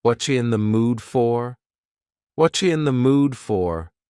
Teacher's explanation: Here the word you has been reduced to cha.